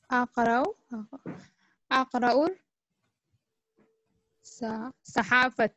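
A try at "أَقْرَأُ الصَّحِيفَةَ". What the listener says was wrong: Akraus Sahifata. Akraus. You need to join Hamza with Swad. Alif Lam will be silent here because of Shabda. So you need to join Hamza with Swad. Akraus. Akraus. Join Hamza with Swad. Akra'u Sahifata.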